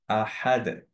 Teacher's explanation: এরপরে দাল, এটা যখন স্টপ করি তখন অ্যাকচুয়ালি তাজউইদের রুলিং হচ্ছে আমাদের একটা কলকলা দিতে হবে, একো দিতে হবে। সো ইট সাউন্ডস লাইক আহাদ, আহাদ, আহাদ এরকম না, আহাদ।